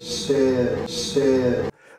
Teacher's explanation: raising the vowel that's in the word trap